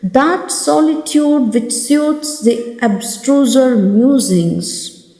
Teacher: Here the oo sound, solitude, and suits musings. The oo sound is repeated 4 times in this line.